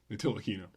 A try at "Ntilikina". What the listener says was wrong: You don't pronounce the T in French. It's Ntilikina.